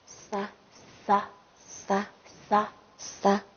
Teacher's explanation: 发音部位是舌尖前。对，舌尖前